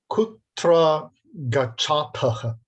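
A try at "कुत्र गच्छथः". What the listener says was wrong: The vowel preceding the t, can you pronounce that again? Yeah, the first one, it came out a little bit al pesto, as you put it yourself, a little bit Italian. Kutra gachata.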